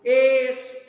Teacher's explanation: Na palavra estrofe, a sílaba tro, que é a penúltima sílaba, ela é a sílaba tônica. Então, essa sílaba, essa palavra, ela é paroxítona.